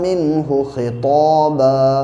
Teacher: طا خص قزم سے ہے اس لیے طا کو موٹا پڑھیں گے